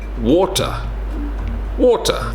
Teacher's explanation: Some British people would say water, water, skipping the T